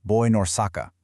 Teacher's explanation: They blur the sounds together. The N in born connects directly to the N in in, and the N in in connects to the O in Osaka.